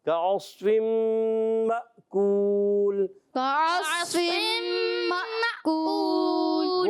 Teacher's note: اور الف کے اوپر آپ دیکھ رہے ہیں چھوٹی سی دال، جس کو جزم کہتے ہیں، سکون کی علامت ہے، اور یہاں جھٹکا دے کے پڑھیں گے، مأکول، حمزہ کو ہم نے جھٹکا دینا ہے